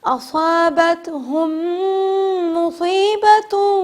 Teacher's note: 2 میم آ رہے ہیں، میم پہ تشدید ہے، غنہ کریں گے